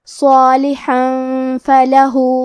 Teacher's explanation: صالحن حرف الحاء کی ادائیگی حلق کے درمیان والے حصے سے ہے، کیونکہ اس پہ تنوین زبر ہے، پھر حرف الفا ہے۔ کلمت فلح فا حروف الاخفاء میں سے ہے، تو ہم یہ حکم کو غنہ کے ساتھ ادا کریں گے